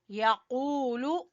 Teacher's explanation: یقول قاف زبان کی جڑ سے واو مدہ ادا کریں گے